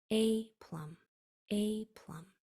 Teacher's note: usually that first part is accented, which means you say it stronger